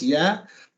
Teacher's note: the ya obviously is just 2 counts because it's neither followed by a sukun nor by a hamza. So it's just 2 counts.